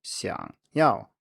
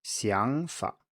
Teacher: in 想要, to want, 想, is a low tone, 想要. But in 想法, idea or way of thinking, 想 is a rising tone, 想法. This is normally not shown, so you have to apply these rules yourself. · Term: tone change